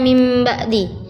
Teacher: Huruf iklab ada 1 yaitu ba. Cara membacanya adalah dengan mengganti nun sukun atau tanwin menjadi bunyi mim.